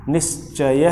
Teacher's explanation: तो जब संधि करोगे तो ये विसर्ग इस च वर्ण के कारण तालव्य स में परिवर्तित हो जाएगी और रूप बन जाएगा निश्चय है।